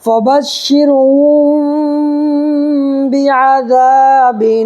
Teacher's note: تو را ساکنی سے پہلے دیکھو شین کے نیچے زیر ہے تو یہاں پر باریک پڑھنا ہے. میم ساکن کے بعد با آئے تو گنہ کے ساتھ اخفا ہوگا